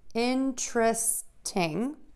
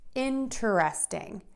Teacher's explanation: If you want to say interesting, you can say three beats, interesting, or you can say four, interesting. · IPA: /ˈɪntrəstɪŋ/